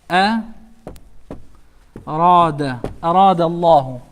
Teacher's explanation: Letter Ra with a fatha. This is pronounced with a full mouth. Ra instead of Re.